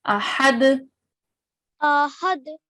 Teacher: We recite it with a jerk, okay? Because when we stop here, we do make a pause here, it becomes a dal of qalqala.